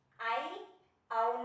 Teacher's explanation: వక్రతములు అన్నా ఒకటే ఇవి రెండు ఐ ఔ ప్లుతములు వక్రతముల కిందికి వస్తాయి వీటిని త్రిమాత్రాకారంలో పలకడం జరుగుతుంది కాబట్టి వీటిని ప్లుతములు వక్రతములు అని అంటారు